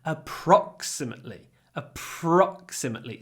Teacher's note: so the stress is on the second syllable a so we make it longer not a imately with a